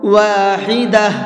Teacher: گولتا پر وقف کرتے ہیں تو وہ گولتا ہا بن جاتی ہے، اس لیے میں نے کیا پڑھا ہے اس کو واحدہ۔